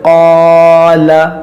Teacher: ये क़ाफ के साथ अलिफ भी मोटा होगा। जैसे क़ाला, ये अलिफ भी मोटा हो गया इसके साथ में।